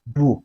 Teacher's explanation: its tone was fourth tone, which is pronounced as bu, which is falling tone